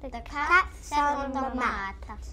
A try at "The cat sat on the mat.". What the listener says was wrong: Try it again without moving your tongue so much.